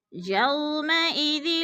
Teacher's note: واو ساکن سے پہلے یا کے اوپر زبر ہے تو وولین کو ہم نے لمبا بھی نہیں کرنا اور جھٹکا بھی نہیں دینا